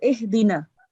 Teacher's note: this ha is just pronounced basically, so basic. So ihdina, that's it, not from your throat